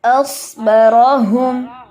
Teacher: नोक तो सामने लगेगी ना दांतों की, लेकिन पीछे से जड़ जो है उसको उठाएंगे तो मोटा होगा